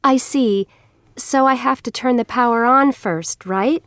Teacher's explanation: notice the rising intonation at the ends of the sentences